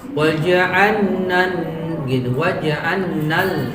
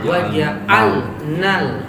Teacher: Karena lam mati setelahnya ketemu nun, maka dia dibaca izhar. Dia nggak boleh idgham. Meskipun makhrajnya berdekatan, bahkan sebagian ulama mengatakan dia satu makhraj.